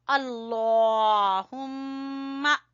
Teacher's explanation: आपने लफ्ज अल्लाह को मोटा पढ़ना है और मीम के ऊपर गुन्ना करना है।